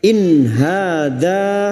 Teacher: Kafaru in hadza, nun sukun bertemu ha idhar halqi, nun sukun dibaca jelas tanpa mendengung